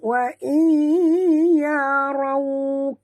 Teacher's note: Ra tebal ya, balik atas dan muncungkan mulut apabila menyebut waw yang mati ni.